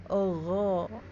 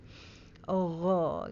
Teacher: Kalau gho berarti bibirnya bulat ya saat mengucapkan, seperti kita mengucapkan huruf o ya. Jadi bukan monyong, bukan gho. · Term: bulat o